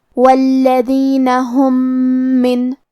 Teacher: ہم پہلے میم کو دوسرے میم میں ملا کے ایک ہی میم غنہ اور تشدید کے ساتھ ادا کریں گے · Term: ادغام متماثلین صغیر